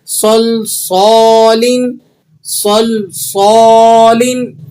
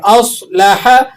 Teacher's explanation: صاد کو آپ نے موٹا بھی کرنا ہے اور سیٹی بھی داخل کرنی ہے